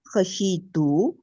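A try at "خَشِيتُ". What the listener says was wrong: آپ بول ایسے رہی ہیں، خشی تو بول رہی ہیں.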